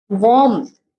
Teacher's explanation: some speakers add a tiny P sound inside the word warm